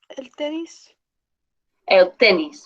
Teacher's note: So it's el tenis. The stress is on the E.